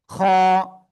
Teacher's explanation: খ, গলার শেষ ভাগ থেকে এক রিপ টেনে উচ্চারণ করতে হবে